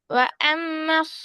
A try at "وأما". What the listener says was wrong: இல்ல, பின்னுக்கு போக கூடாது. நல்லா முன்னாடி வந்துடணும்.